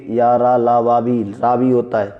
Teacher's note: या और वा अर्ध स्वर होते हैं, रा प्रकंपित या लुंठित है और ला पार्श्विक है